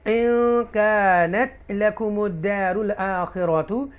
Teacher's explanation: یہاں اکفا کریں گے کیونکہ نون ساکن کے بعد کاف آ رہا ہے، کاف اکفا لیٹر ہے